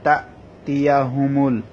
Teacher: তারপর তা, তা হামজা জবর তা, এখানে ধাক্কা হবে, হামজাটা ধাক্কা যেন স্পষ্ট হয়